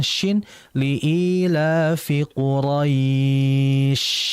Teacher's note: Kemudian ketika lin sudah dilafazkan, diakhiri huruf shin, dan shin memiliki sifat yang disebut dengan rikhawah dan hams. Artinya dia mengalir hurufnya disertai dengan udara yang keluar.